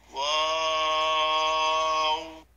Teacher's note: এই হরফটি 4 আলিফ পরিমাণ লম্বা করে বলতে হবে। 2 ঠোঁট গোল করে শুরু হবে, 2 ঠোঁট গোল হয়ে শেষ হবে, মাঝে কিছু টাইম মুখ খুলে থাকবে।